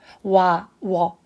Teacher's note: 와, 워. 발음을 하면 이게 입술과 혀가 두 번 움직이거든요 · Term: 이중모음